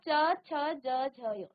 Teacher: आपकी जीभ जहां स्पर्श कर रही है वो है आपका तालु स्थान। आपके मुख के अंदर उसे तालु कहा जाएगा।